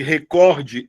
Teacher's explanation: A sílaba tônica de recorde é o cor